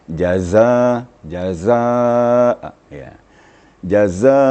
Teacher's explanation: Sedikit lagi penekanan sehingga timbullah suara zainya.